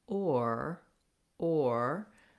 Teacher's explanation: my tongue is shifting and changing and my lips are changing from more of a rounded to an unrounded or and my tongue is lifting into that er position so